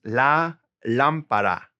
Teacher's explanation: gotta stress that first syllable got an accent right there the floor in general is el